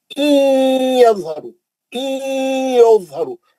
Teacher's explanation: नून साकिन का इदगाम माल गुन्ना हर्फ या है, यज़हरु यज़हरु ज़ात को मोटा पढ़ेंगे, रू में मध्य असली करेंगे